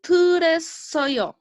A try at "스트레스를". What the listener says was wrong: yeah, we still keep skipping like a 스트레스. We still missing le actually.